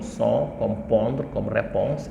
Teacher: le on, c'est le O ouvert de fort, de sort, de port, qui nasalisé devient un on